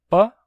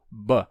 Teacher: Isso não afeta o sentido da palavra. Numa fala mais lenta, normalmente sai com som de P e numa fala mais rápida, mais relaxada, pode sair com som de B.